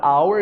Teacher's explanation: a palavra hour inicia com H, mas não tem som